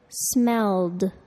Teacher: The ed verb ending sounds like a d, smelled.